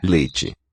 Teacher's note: So the vowel has raised. E to E, the mouth just doesn't open as far.